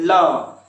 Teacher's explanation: तो ल ल कहां से आ रहा है, तो ये दांत से निकल रहा है ना, जी देखिए सट रहा है ल ल ल, है ना, तो दांत सट रहा है पास में जी में, ये किससे आ रहा है दंत से आ रहा है।